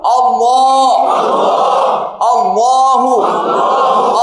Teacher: তাকফিম হবে তাকফিম মানে মোটা হবে মুখটা ভর্তি মনে হবে